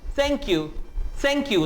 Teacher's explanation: ये th जो है ये वॉइसलेस है, इसकी कोई आवाज नहीं है, हल्की सी हवा निकलेगी, थैंक यू, थैंक यू, थैंक यू, ये हल्की सी हवा निकलेगी, लेकिन अदरवाइज ये वॉइसलेस th है।